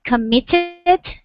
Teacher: So this word here is committed. Committed with the emphasis on mit.